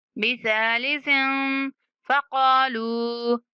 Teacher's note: دوسرے سا کے اوپر ہم اخفا کریں گے، یعنی ہلکی سی آواز ناک میں چھپائیں گے